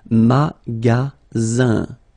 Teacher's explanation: the ending here is IN, so it's nasal, it goes in your nose, and it's un.